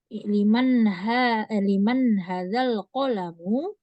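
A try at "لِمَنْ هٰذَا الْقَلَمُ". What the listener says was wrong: Hadza hanya dua harokat. dua.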